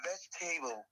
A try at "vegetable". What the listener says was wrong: Yeah, that is where you miss it. The table. It is not te. Did you get that? So you say veg, table. Instead of te, table. The place you miss is that place you say Tay. So that is the only part you miss. So you don't say Tay. Vegetable. Just say T.